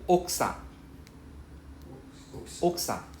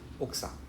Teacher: I don't say the U, I don't pronounce the U, it's silent. So oksa without the U.